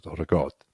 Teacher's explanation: you got to roll the R, but then you drop the A